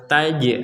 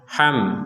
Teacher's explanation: taj ada pentalan, ham nggak ada pental. Jadi kita tidak boleh membacanya ham, tetap dibaca jelas.